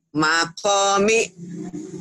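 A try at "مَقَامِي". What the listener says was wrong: Semua panjang. Mimnya doang yang pendek.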